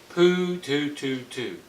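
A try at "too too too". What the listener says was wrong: Yeah, that's better. You went back to poo, poo, poo.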